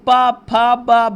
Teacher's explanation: पा से आप बोल रहे हैं तो आपका ओष्ठ टच हो रहा है, ओष्ठ से बोला जाता है। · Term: प वर्ग